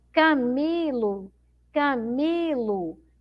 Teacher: Então a sílaba mais forte é o mi, não é? Esse mi aqui é a que eu demoro mais tempo falando, ó.